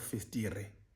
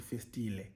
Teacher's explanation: they replaced the R with the approximant L, which would mean instead of festire, it would be called festile.